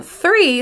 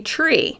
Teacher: Instead of saying three, they say tree. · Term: TH sound